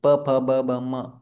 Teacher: म में हमारा क्या होता है ना कि म जो है वो ओष्ठ शब्द है। उसमें दो ओठ एक दूसरे को बंद होते हैं। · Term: प वर्ग